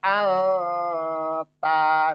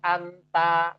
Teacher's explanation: bacaannya disamarkan dulu dan didengungkan dan ditahan 2 harokat minimal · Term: ikhfa